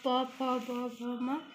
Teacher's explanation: प के उच्चारण शब्द दंत के द्वारा हो जाएंगे, और प फ ब भ म ये ओष्ठ द्वारा हो जाएंगे